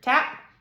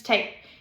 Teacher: when you smack an e on the on the word tap it changes that a right there from an ah to an actual a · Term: long vowel sounds